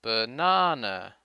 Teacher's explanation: the stressed syllable na is longer than the other syllables